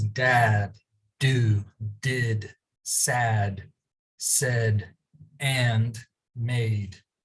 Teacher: the d sound is a voiced sound because the vocal chords vibrate when you make the sound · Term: voiced d sound, voiced D sound